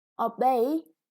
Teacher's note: And the act, obey, is a verb. The second syllable is stressed.